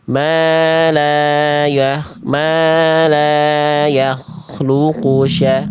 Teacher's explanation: Terus tadi lanya kecepatan lanya. Ingat di sini enggak boleh cepat karena ada fathah ketemu alif ya. Dua harakat.